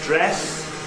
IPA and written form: ˈdres (dress)